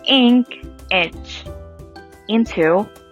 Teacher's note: the jaw it needs to be slightly lower than for the tense eye and the tongue it needs to be high but lower than for the tense eye